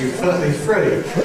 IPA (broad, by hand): fɜːʔi friː